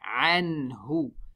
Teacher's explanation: We smile on the ayn and noon. Ha has a dhamma. We make the lips round.